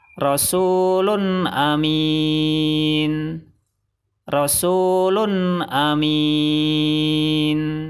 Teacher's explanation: Salah, karena bacaan ithar tidak boleh dengung.